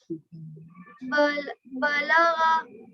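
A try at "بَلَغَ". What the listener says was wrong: बलगो, गैन को मोटी आवाज में।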